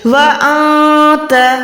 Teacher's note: گننے کے ساتھ ہم چھپاتے ہیں نون کو